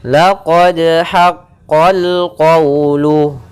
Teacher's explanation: Kemudian pada lafal haqqal qawlu, di sini ada alif lam qamariyah, yaitu lamnya terbaca, haqqal langsung ke huruf lam.